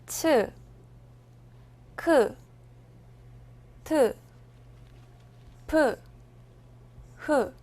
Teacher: 이 소리들은 즈, 그, 드, 브를 발음할 때 바람을 더 많이 넣어서 내는 소리입니다. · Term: 거센 소리